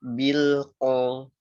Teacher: Allama bil itu tipis semua. Terus pas masuk qolnya tebal. Jangan lupa lam sukun dialirkan.